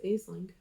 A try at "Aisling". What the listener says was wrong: Well, it's spelled Aisling, but it's pronounced Ashley.